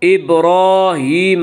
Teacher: را کے اوپر کھڑا زبر ہے، کھڑا زبر کو 1 الف کے برابر کھینچ کر پڑھیں گے